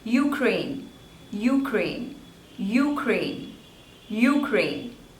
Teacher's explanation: slavors and the stress is on the second one you crane so stress is on crane